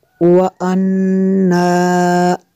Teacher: نون مشدد ہے، یہاں پہ غنہ کرنا ہے۔